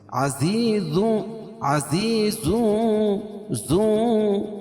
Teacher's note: عذاب اخفا حقیقی، کیونکہ نون ساکن تنوین کے بعد حروف اخفا کے 15 حرفوں میں سے شین ہے تو یہاں ناک میں آواز کو چھپا کر پڑھیں گے